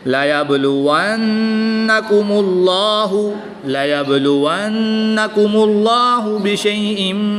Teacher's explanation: نون مشدد ہے تو یہاں پر غنہ آنی کر کے پڑھیں گے۔